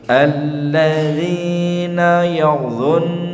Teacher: Jadi harus tepat meletakkan huruf dha, dha gitu. Ujung lidah nempel pada ujung dua gigi seri yang atas.